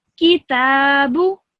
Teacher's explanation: You need to pronounce the ta for the longest. You need to pronounce that for 2 seconds, and the kaf and the ba for 1 second. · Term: vertical fatha